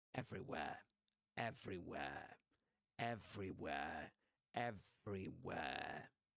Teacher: So he doesn't pronounce the R sound at the end of a word, except in some cases. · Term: Southern Standard British pronunciation